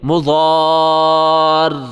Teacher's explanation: جب ہم وقف کریں گے، اسٹاپ کریں گے تو را کو آخر میں تشدید دینی ہے، مضار، ایسے نہیں مضار، مضار، آخر میں را کو خالی نہیں چھوڑنا ہے، تشدید دے کے پھر چھوڑنا ہے